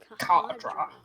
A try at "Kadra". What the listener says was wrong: No, it's Kadra. You don't pronounce the H as much.